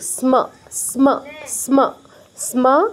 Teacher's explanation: দন্তস আর ম, দন্তস অর্ধেক, দন্তসের নিচে হসন্ত আছে, আর ম পুরোপুরি। তো দন্তস অর্ধেক উচ্চারণ হবে, ম পুরো উচ্চারণ হবে।